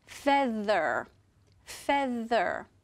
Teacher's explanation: this is our Focus word for diagraph th it's feather feather if you put your hand on your throat when you say feather you will feel your throat vibrate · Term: vo diagraph th sound